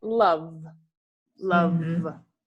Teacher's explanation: o som de V no final, você tem vibração. Você tem movimento aqui. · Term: voiced